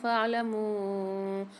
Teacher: میم کے ساتھ واو مدہ ہے اور مد ہے تو 3 سے 4 الف کی مقدار کھینچ کے پڑھیں گے کیونکہ یہاں چھوٹا مد آ رہا ہے۔